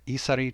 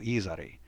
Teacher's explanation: just a slight change from isari to izari. So just voicing that middle sound, isari to izari.